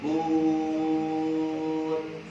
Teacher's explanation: Nun mati, ujung sisi lidah ke langit-langit.